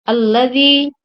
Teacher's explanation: Alladzi, dal bertemu ya, itu merupakan mad tabi'i. Cara membacanya dipanjangkan 2 harakat.